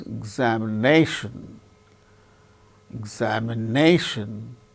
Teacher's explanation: second syllable gains less importance so it is said to receive secondary accent · so fourth syllable gains primary stress more importance